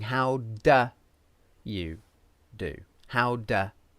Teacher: sometimes we use a schwa for the word do